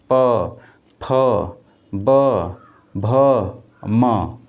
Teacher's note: क्या दोस्तों प फ ब भ म, यानी इसका उच्चारण स्थान क्या होता है ओष्ठ। क्या ओष्ठ, जैसे बोलेंगे प तो आपके ओठ क्या होंगे दोस्तों चिपकेंगे